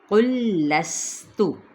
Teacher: قوف کی پیش کو موٹا ادا کرتے ہوئے لام کے ساتھ ملائیں گے اور آگے دیکھیں تشدید بھی ہے.